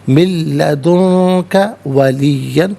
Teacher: لدنک میں نون ساکن ہے، اس کے بعد کاف حرف اخفا ہے تو نون ساکن کو اخفا کے ساتھ پڑھیں گے۔ من لدنک ولیًا، یہاں 2 زبر کی تنوین وقف میں الف سے چینج ہو جائے گی، ولیہ وقف کی صورت میں پڑھا جائے گا۔